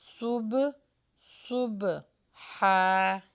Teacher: سواد کا مخرج نکالیے اور با کے اوپر قلقلہ کیجئے۔